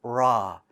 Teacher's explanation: the r in the english language is further back raw it's almost closer to this smooth side and kind of